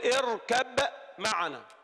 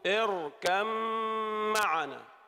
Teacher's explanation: صحت الرواية هنا في رواية حفص بأنه أدغم الباء في الميم